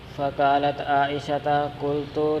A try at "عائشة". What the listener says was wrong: عائشہ. ہاں جی، تا نہ پڑھیں یار، تا نہ پڑھیں، فاعل قالت کا.